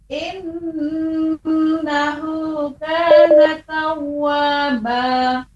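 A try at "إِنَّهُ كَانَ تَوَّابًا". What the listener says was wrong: Iya, bagus. Untuk iya, untuk huruf H bagus Ibu.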